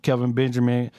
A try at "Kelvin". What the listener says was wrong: don't pronounce his L's.